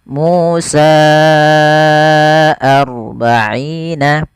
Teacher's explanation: Dan di situ kita baca dengan mad jaiz munfasil. Panjangnya adalah empat harakat atau lima harakat